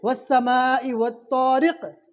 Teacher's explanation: قاف کے اوپر جزم آ گیا، پہلے والے حرف سے ملا کر اس کے مخرج ٹکر کھا کر الگ کر دیں گے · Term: کلکلا